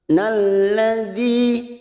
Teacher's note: dzi ada kasrah bertemu ya sukun 2 harokat.